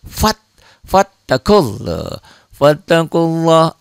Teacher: lafad Allahnya dibaca tebal tebal